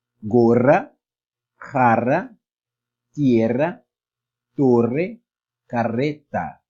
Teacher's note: um som vibrante de língua, porque são dois R juntos. Geralmente, esse dígrafo é utilizado no meio das palavras.